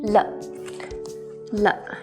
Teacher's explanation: 了 is also a neutral tone, which means it's short and brief with no tone marks on top.